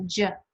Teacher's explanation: Now let's turn your voice on and you get the j.